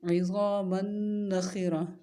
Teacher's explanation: عین کی آواز حلق سے، غا کی آواز موٹی اور نرم ہوگی. میم اور نون دونوں کا ادغام ہوگا اور غنہ کریں گے کیونکہ نون مشدد ہے